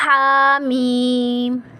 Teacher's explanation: ہا کے اوپر کھڑا زبر ہے تو 1 الف کی مقدار کھینچ کر پڑھیں گے، اور میم کے اوپر مد ہے تو 5 الف کی مقدار ہم کھینچ کر پڑھیں گے.